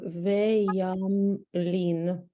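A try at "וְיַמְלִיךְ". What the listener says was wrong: The last letter is a final chaf. Don't be afraid to pronounce the ya.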